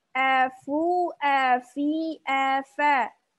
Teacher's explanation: posisi dua-duanya masih senyum atau istifal. Ya, diucapkan dengan tipis.